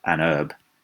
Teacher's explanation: they didn't pronounce the H on herb, and we don't think they did in the early modern English period, that we added an H later on, so they would have said herb like Americans do. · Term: silent H